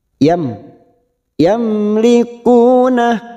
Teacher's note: mim sukun dibaca jelas tanpa mendengung